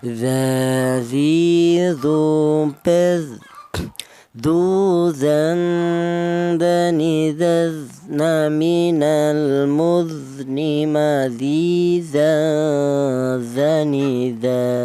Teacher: keluarnya huruf berasal dari ujung lidah menyentuh ujung gigi seri atas